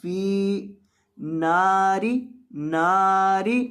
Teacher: نون کو لمبا کرنا ہے تھوڑا سا، ایک الف کے برابر